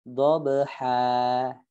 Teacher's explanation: dengan dipanjangkan sebagaimana mat asli, yaitu 2 harokat gitu ya, tanpa ditekan di ujungnya ya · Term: mat iwad